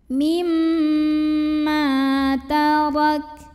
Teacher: Cara membacanya kita panjangkan mimnya 2 harokat. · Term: madhabi'i